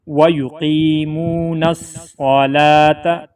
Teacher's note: نون کو صاد کے ساتھ ملا لیں گے تاکہ صاد کے اوپر شد کی ادائیگی ہو سکے